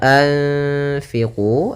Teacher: Ini bacaan Ikhfa maka suaranya itu suara nunnya kita samarkan kepada makhraj huruf Fa